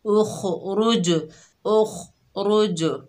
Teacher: खा की आवाज़ इसके मखरज में रुक रही है और जीम की आवाज़ पलटकर वापस आ रही है, क्योंकि जीम हरूफ कलकला में से है।